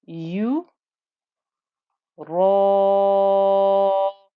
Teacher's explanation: This is a 4-count stretch. The ra is thick because of the fatha, so the whole of this 4-count stretch becomes thick and heavy.